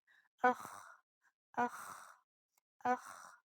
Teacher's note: ख ख ये हलक के इब्तिदाई हिस्से से अदा होता है। हलक का इब्तिदाई हिस्सा यानी हलक का वो हिस्सा जो मुंह से करीब तरीन है, the closest part of the throat. · जब हम खांसते हैं, हलक में जहाँ खराश महसूस होती है ये वो जगह है, इसलिए जब ख कहेंगे तो उसे थोड़ी सी खराश के साथ अदा करेंगे, अख अख अख। हलक के इस हिस्से को अरबी में अदनल हलक कहते हैं।